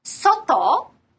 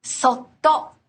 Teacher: That's because the prolonged consonant expressed with the little tsu actually makes up a single sound unit of its own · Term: double consonant